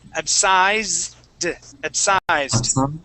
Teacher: even though it ends with an S, that is a Z sound.